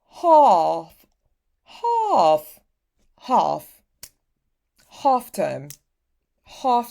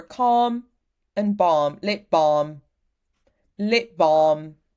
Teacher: That's why it's written back here. So open back and it's not rounded.